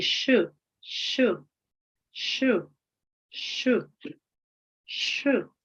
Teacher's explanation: the blade of the tongue is near the alveolar area with a simultaneous approximation of the front of tongue toward the jaw